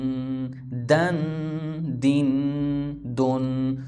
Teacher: دال دو زبر دن، دال دو دال. دیکھیں نا زبان اوپر والے دانتوں کے ساتھ لگے گی، دال سختی کے ساتھ. دال دو زیر دین، دال دو پیش دن، دن دن دن.